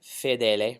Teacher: So make sure no diphthongs, very pure e vowels.